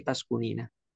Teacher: Kemudian nunnya dikasrahkan bukan domah lagi. Bukan taskunu, tapi taskunina.